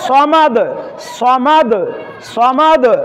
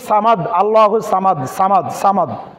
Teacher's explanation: তার মধ্যে সাদ হচ্ছে একটি, সাদে যদিও জবর হয় সাদ জবর সা না হয়ে হবে স, এটা হচ্ছে মোটা হরফ।